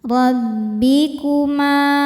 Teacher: Ra dibaca tafkhim karena berharakat fathah. Cara bacanya tebal. Rabbikuma Ma mad thabi'i zhahiri sebab ada alif didahului harakat fathah. · Ma mad tabi'i dhahiri sebab ada alif didahului harokat fathah. Cara bacanya panjang 2 harokat.